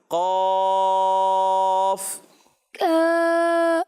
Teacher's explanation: قاف کا الف بھی موٹا ہوگا